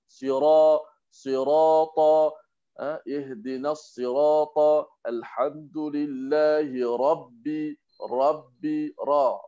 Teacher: Huruf ra bila baris di atas dalam surah Al-Fatihah maka kena tebal.